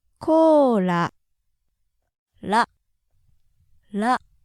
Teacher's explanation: it's close to an L but more similar to a light D sound very light though just kind of bounce your tongue off the roof of your mouth just behind your Upper Front Teeth